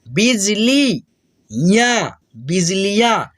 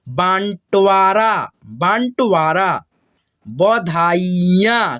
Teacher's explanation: जिस अक्षर पे चंद्र बिंदु की मात्रा रह रहा है हमको जो है ना उसको आधा ना के रूप में पढ़ना है, और आधा ना का जो है ना उच्चारण हम लोग नाक और मुंह के रूप से करेंगे